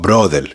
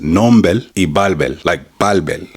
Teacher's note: We're not speaking Spanish, we're speaking in English and he's changing the R for an L.